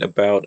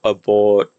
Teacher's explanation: if you say ow, you can sort of, you might be able to feel your tongue moving around in your mouth, but if you say aw, you shouldn't, and it just stays in the same place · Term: monophthongizes